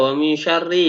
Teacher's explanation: Namanya bacaan ikhfa. Dibaca dengan samar, disertai sedikit dengung dan ditahan.